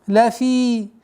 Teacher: Долгота в размере двух огласовок кесры.